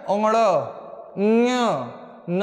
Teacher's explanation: बोल रहे हैं तो देखो नाक से वायु बाहर आ रही है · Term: अनुनासिक